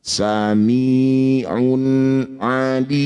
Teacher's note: Bunyi dhammah tanwin baca dengan jelas, tidak usah dirubah, tidak usah dipanjangkan, juga tidak usah didengungkan.